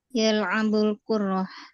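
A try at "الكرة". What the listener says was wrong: Kurah tanpa tasydid.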